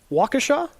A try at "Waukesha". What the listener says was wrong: You were adding an extra, E in there.